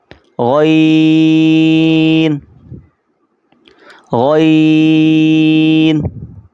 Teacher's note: زور لگا کر جس طرح انسان اپنا بلغم نکالتا ہے، کھانستا ہے، اسی طرح زور لگا کر پڑھیں گے